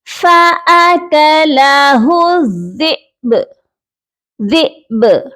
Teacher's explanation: حمزہ پر آپ نے جھٹکا دے کر اور با پر قلقلہ کر کے پڑھنا ہے